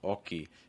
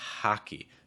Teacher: italian speakers in english that h often gets dropped